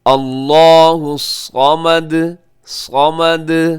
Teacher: الصمد میں صاد موٹا رکھیے گا، اسے سمد نہیں پڑھنا آپ نے، سین کے ساتھ نہیں بلکہ صاد کے ساتھ ہے، تو آپ نے یہاں پہ اس کو کیسے موٹا پڑھنا ہے، اللہ الصمد، صمد۔